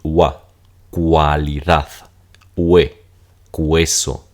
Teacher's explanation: Pero aquí todas estas U van a sonar como wa.